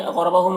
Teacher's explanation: कौफ को पुर पढ़ेंगे और कलकला करेंगे, रॉ को पुर पढ़ेंगे। हुम यहाँ पर मीम साकिन के बाद मीम है तो इदगाम शफवी होगा, गुन्ना के साथ पढ़ेंगे मीम को मीम से मिलाकर।